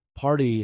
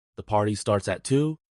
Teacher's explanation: party has a strong R sound in American English